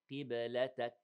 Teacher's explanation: the kaf has hams because we stopped on it